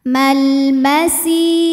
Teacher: Kemudian alif lamnya dinamakan dengan alif lam qamariyah sebab alif lam menghadapi huruf qamariyah yaitu mim. Maka lam sukun dibaca dengan jelas atau biasa kita sebut dengan idhar qamari.